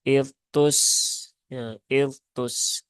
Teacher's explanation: dalnya menjadi tidak jelas sehingga seolah-olah terbaca idgham dengan huruf ta